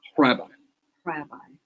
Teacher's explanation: It starts with a puff of air.